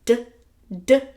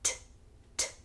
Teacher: So when we say D, D, we're using our vocal cords to make that sound. On the other hand, when we say T, T, our vocal cords are not engaged. Because our vocal cords are engaged or not engaged, we get different consonant sounds.